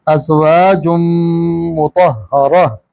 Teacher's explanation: अब यहाँ वक्फ किया हमने तो ता की आवाज़ हा में बदल दी।